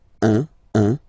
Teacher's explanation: when you combine this u and n, you get the nasal sound